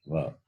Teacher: Without the usage of the teeth, va is not complete. It is labial, but dental also. Dental plus labial.